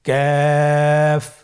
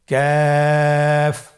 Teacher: কাফ উচ্চারণের ক্ষেত্রে অবশ্যই পাতলা করে উচ্চারণ করতে হবে এবং 3 আলিফ টেনে পড়তে হবে।